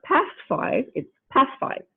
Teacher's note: the stop is becoming a fricative because it is trying to assimilate with another fricative and so it becomes like a fricative and we have a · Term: assimilation of manner